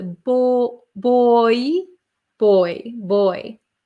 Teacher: o i or the o y is a boy boy boy if you can hear there's like a y sound almost oi